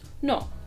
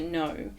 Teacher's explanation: pronounced with rounded lips that stay open it's not like the English know where the lips sort of come narrower towards the end of the word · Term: English no, French no